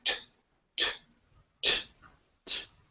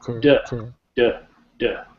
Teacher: So the d sound, okay, it's voiced. We put our fingers to our throat. We make the d sound. We can feel our vocal folds vibrating. The t sound, there's no vibration.